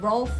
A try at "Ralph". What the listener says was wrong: Not Rolf. Rolf is a different name. Ralph with an A.